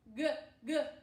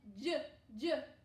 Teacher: The sound is made in a different part of your mouth, and that can help us distinguish the difference between G, G, the hard sound in your throat, and J, J, the soft sound that's in your mouth